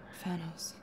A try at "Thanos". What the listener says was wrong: Are you saying THANOS? Like with an F?